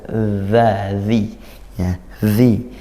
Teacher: dibaca dari makhrajnya yaitu di ujung lidah ke ujung gigi